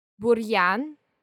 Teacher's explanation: In buryan, the preceding consonant, r, stands for a hard sound.